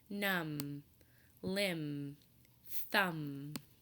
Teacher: the end of words so when MV are connected in words we don't hear the buh sound at all instead we just hear the MM sound like in numb or limb we don't hear but we just